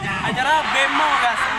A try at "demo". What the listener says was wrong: Ya, demo bukan bemo. Demo.